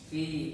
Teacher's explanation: dan membacanya panjang selama 2 harokat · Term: Mad asli